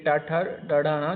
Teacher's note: जो ट वर्ग है ये मूर्धा से उच्चारित होने के कारण इन्हें क्या कहते हैं? मूर्धन्य वर्ण कहते हैं।